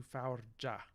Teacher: typical french sound change where we have ga becoming ja so we have palatalization of this ga before ah